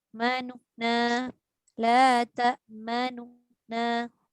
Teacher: raum ni membunyikan baris nun yang pertama tu. Nu tu sikit je.